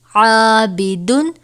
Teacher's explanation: عین الف زبر عا، با زیر بی، عابی، دال دو پیش دن، عابدن۔ الف سے پہلے عین ہے جسے ہم پہلے ہی باریک پڑھتے ہیں تو عین کے ساتھ الف کو بھی باریک ہی پڑھیں گے